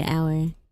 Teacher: I think I end up shortening the word to one syllable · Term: southern twang